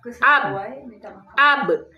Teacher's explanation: ba termasuk huruf safatain huruf dua bibir